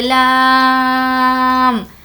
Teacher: یہاں پر لام پر مد ہے تو ہم اس کو کھینچیں گے لام، اور ساتھ میں یہاں پر میم بھی ہے، میم پر جو کہ تشدید ہے، تو اب ہم لام کو کھینچتے ہوئے اس میں میم کو ملا لیں گے، لام، اس طریقے سے، اور میم پر تشدید ہونے کی وجہ سے غنہ بھی کریں گے، الف لام میم۔